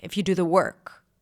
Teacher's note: My intonation was a little messed up here. It sounded like I'm about to continue